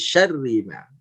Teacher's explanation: karena ro-nya dia harokatnya kasroh, walau ketika bertasdid maka dia tetap jadi dibaca tipis